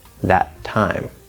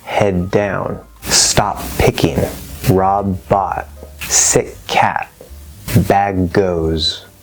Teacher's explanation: you're going to hold the first T in place just for a brief moment and then push out the second T